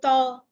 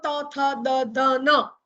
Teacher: તમે બોલી જુઓ ત, તમે દાંતને અડાડ્યા વગર બોલી જ નહીં શકો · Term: દંત્ય વ્યંજન